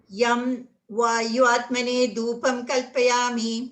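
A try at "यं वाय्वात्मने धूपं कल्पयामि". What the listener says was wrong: It's not it's not Vayu, it's Vaya. Vayavat. Vayavatmane.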